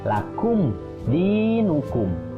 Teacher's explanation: mim bertemu dengan dal, itu namanya idhar syafawi. Jadi mimnya, mim sukun harus dibaca jelas.